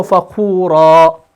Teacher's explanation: لیکن اگر رکیں گے تو فخورا آ کی آواز کو بھی آپ پڑھیں گے